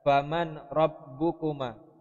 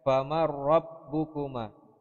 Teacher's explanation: Nunnya melebur, ya, sehingga tidak dibaca. Langsung habis mim masuk ke huruf ra. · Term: idgham bila gunnah